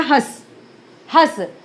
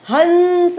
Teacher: बहुत कम नासिका का प्रयोग हुआ, तो इसलिए इसको हम अर्धनासिक्य बोलते हैं, और इसको ये पूर्ण नासिक्य है, ठीक है।